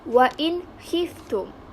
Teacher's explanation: bagi contoh menggunakan huruf Kho yaitu Wain histum ini di mana Nun Sakinah bertemu salah satu huruf izhar halqi yaitu kho maka ia dibaca secara jelas dan terang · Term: tanpa dengung